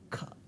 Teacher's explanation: with kha, the place of articulation is still velum, but there is little bit extra flow of air, kha. Similarly, cha, cha, ta, ta, ta, tha, pa and pa. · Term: aspiration